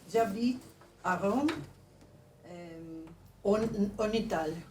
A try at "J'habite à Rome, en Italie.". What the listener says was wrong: La I se pronuncia. En Italie.